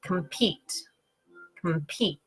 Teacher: So I'm saying compete, compete. Okay, so you can hear it goes unstressed, stressed.